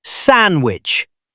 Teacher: It has a D in the middle. Do we say it? Almost never. We say sandwich.